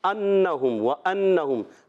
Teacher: انہم و انہم، حمزہ کو خوب واضح کریں گے، یہ الف نہیں حمزہ ہے کیونکہ زبر آ گیا۔ نون مشدد میں ایک الف کا غنہ کرتے ہیں۔